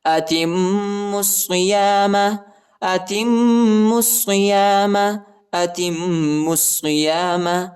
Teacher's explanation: میم پر جو ہے شد آیا ہے اور غنہ بھی کریں گے، اور میم کو صاد کے ساتھ ملائیں گے، ٹھیک ہے، صاد پر بھی شد آیا ہے اور صاد کو شدت کے ساتھ سختی کے ساتھ پڑھیں گے.